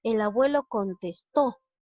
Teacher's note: Aquí también la mayor fuerza de voz recae en la sílaba to. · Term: palabra aguda